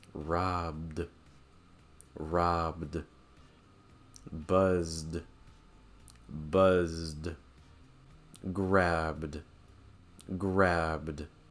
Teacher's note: if a verb ends on a voiced sound like buzz, buzz, then ed will sound like d